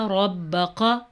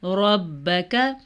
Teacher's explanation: یہ موٹا قاف نہیں ہے، یہ باریک قاف ہے